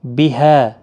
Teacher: ہا الف مدہ ہے، ایک الف کی مقدار کے برابر کھینچ کر پڑھیں گے